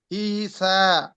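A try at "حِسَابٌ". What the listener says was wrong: হিসা, এরকম না ভাই, হ্যাঁ, পেশ বুন, হিসাবুন, ঠিক আছে?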